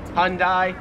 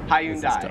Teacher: make it like two syllables like hyundai australians three syllables hyundai